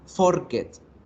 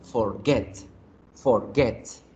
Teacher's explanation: la fuerza se hace en la segunda sílaba